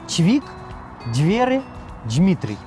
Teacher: гукі Д і Т змягчаюцца перад мяккімі В і М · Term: асіміляцыйная мяккасць